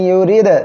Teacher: পড়তে হবে ইয়া পেশ ইউ রদাল রিদ ইউরি এখানে খেয়াল করেন র অক্ষরে নিচে জের আসছে চিকন করে পড়বেন আর দাল অক্ষরে সাকিন রয়েছে এখানে ধাক্কা দিয়ে পড়তে হবে কলকলা